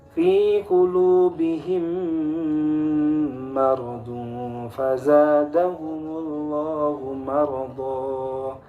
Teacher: Mim sukun bertemu dengan huruf mim, maka mudah saja cara membacanya, ditahan dua harokat. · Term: idgham mimi